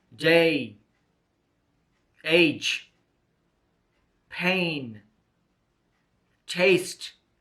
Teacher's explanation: A is a diphthong made by the combination of a and e. The mouth is now open. The tongue position is in the center of the mouth.